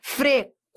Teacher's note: Frequente, ó, eu fui da semivogal para vogal. Frequen, do fraco pro forte, do fraco pro forte, do fraco pro forte. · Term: ditongo crescente